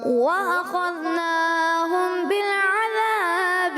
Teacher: میم ساکن کے بعد بات ہے اخفاء شفوی ہونا تھا یہاں پر, یہ بہت کم مقدار میں کیا آپ نے